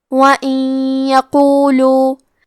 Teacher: ادغام کا معنی ہے حرف کو حرف میں داخل کرنا تو ہم نون ساکن کو یا میں ملا کے غنہ اور تشدید کے ساتھ یہ حکم کو ادا کریں گے · کلمت یقولو میں حرف القاف کی ادائیگی زبان کے جڑ اور تالوں کے نرم حصے سے ہے